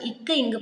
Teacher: நாவினுடைய முதற் பகுதி அன்னத்தின் அடிப்பகுதியை வந்து பொருந்துவதனால் பிறக்கும்